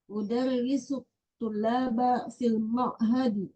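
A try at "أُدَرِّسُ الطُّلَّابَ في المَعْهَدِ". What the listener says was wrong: Lamnya bertasydid. Udarrisut tullaba fil ma'hadi.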